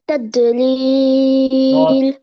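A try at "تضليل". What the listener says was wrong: Bounce হবে না, তাদলিল।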